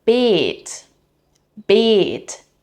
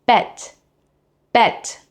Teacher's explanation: Now with a short e, it becomes bet, bet, meaning bed. Again, same consonant sounds, different vowel length, different meaning